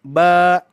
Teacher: ketika huruf ba Ini ditempeli Alif maka ba itu menjadi dua harakat